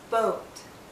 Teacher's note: as we come to the end of this vowel sound our lips become even tighter it finishes actually with a slight or sound oh do you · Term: long vowel sound